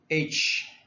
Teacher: produced by restricting the airflow through the open glottis, or by stopping the air completely at the glottis. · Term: Glottals